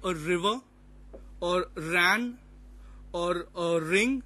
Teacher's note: we don't need to roll the r sound in British that is standard English the the r sound is rolled only in American English and